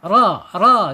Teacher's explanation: Lam, nun, ra itu di situ. Kemudian secara sifat ada di tawasud ya antara tertahannya suara dan mengalirnya suara